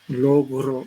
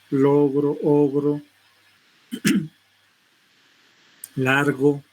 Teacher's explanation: el sonido velar, fricativo, sonoro